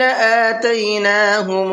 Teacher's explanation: آتیناہم یہاں پر حمزہ کے اوپر کھڑا زبر ہے، اس کو کھینچ کر کے پڑھنا ہے